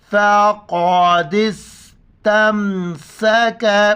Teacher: گے اور دال کو سین کے ساتھ ملائیں گے، فقادس تمسک، دونوں جگہوں پر سین سیٹی کی آواز آ رہا ہے